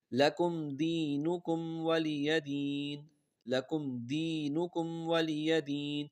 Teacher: میم ساکن کے بعد دال آ رہا ہے، غنہ نہیں ہے، اور دوسرے میم ساکن کے بعد واو آ رہا ہے، تو وہاں پر بھی غنہ نہیں ہوگا.